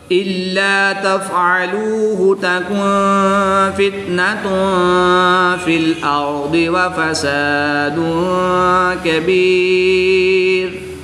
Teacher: واو ساکن سے پہلے لام پر پیش ہے تو واو مدہ ہوگا، ایک الف یعنی 2 حرکات کے برابر کھینچ کر پڑھیں گے۔ الف سے پہلے لام مشدد پر زبر ہے تو اس کو بھی یہاں پر الف مدہ ہوگا